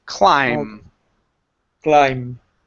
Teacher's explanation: the B is silent so we do not say climb with the B it's only we end on the M